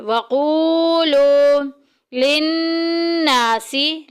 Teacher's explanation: नून मुशद्दिद आ गई, गुन्ना करेंगे, नाक में आवाज़ लेके जाएंगे